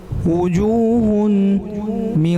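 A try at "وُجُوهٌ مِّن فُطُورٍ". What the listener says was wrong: ہن گنہ کیوں کیے بیٹے نے؟ وجوہ بیٹا وجوہ بس۔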